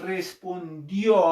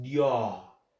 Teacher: Cuando dices respondió, para la I cierras y para la O abres. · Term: creciente